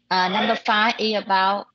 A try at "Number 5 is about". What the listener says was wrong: do not shortcut. You are making a shortcut. Do not say number 5 is. You try to pronounce is. Everything you shortcut.